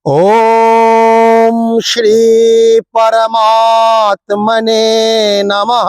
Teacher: পরমাতে টান হবে, পরতে টান হবে না, পরমাত্মনেতে টান হবে, নমঃ এরকম হবে।